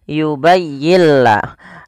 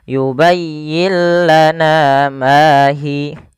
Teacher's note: suara nunnya kita hilangkan dan kita masukkan langsung kepada huruf lamnya. Sehingga yubayyillah, dan lam di sini dituliskan dengan tanda tasdid karena suaranya masuk kepada huruf lam. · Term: idgham bila gunnah